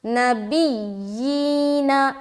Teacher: یا میں سختی کریں گے کیونکہ شد آ گئی